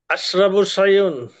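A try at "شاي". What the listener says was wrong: সা, সা, এভাবে বললে হবে, সায়ুন বলা যাবে না, সা।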